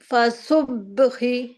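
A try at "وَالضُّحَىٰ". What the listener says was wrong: فا نہیں ہے.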